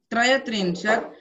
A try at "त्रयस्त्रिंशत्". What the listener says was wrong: त्रयस्त्रिंशत् स प्रोनाउंस करो